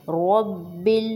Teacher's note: را کو موٹا، با پر زور دیں گے شد کی وجہ سے